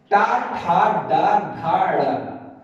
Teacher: इसमें उच्चारण स्थान क्या होता है? मूर्धा होता है।